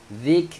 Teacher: huruf kaf kena keluarkan bunyi angin